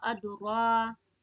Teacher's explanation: रा को खींच के पढ़िएगा, रा खड़ा जबर रा अदरा। अदरका रा में खड़ा है इसीलिए टान के पढ़ेंगे।